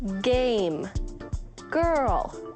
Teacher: move back towards your throat blocking the air but this time releasing with a voiced sound